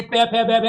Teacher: पे और फे का जब हम प्रयोग करते हैं तो इनका जो उच्चारण हम कर पाएंगे वो ओठ से कर पाएंगे